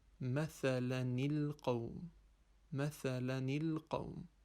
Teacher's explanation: We apply a kasra on the first sukoon, and so it is pronounced mathalan al-qawm, mathalan al-qawm.